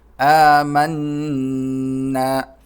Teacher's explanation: قولو، میم کو نون سے ملائیں گے، نون پر تشدید ہے تو اس پر غنہ ہوگا، ناک میں آواز پیدا کریں گے